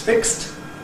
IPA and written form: fɪkst (fixed)